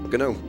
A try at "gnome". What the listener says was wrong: There's no hard G in gnome. Gnome is a soft sign.